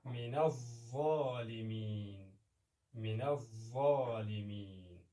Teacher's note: د ظا د ادا کولو په وخت کې باید خوله له آواز څخه ډکه وي یعنې د ظا توری ډک ادا کېږي